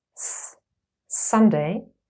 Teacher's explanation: s is a voiceless Alva fricative